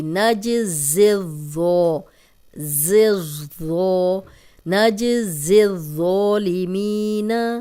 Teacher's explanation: زا جو ہے سیٹی والا ہے، اور آگے ذو نرم ہے، سیٹی کی آواز نہیں آئے گی